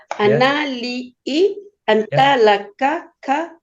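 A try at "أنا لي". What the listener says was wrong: Nggak pakai nyanyi, Bu. Nggak pakai lagu.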